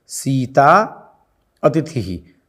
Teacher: किंतु सीता अतिथि ही, तो सीता में है आ और अतिथि में अ, तो आ और अ मिलकर के भी बनेगा आ ही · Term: दीर्घ आदेश